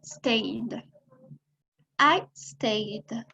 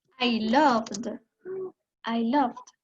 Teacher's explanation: Entonces, cuando vamos a poner el ed, cuando vamos a conjugar el verbo en pasado, esta ed no suena como una T, suena como una D. En presente decimos stay, en pasado decimos stayed.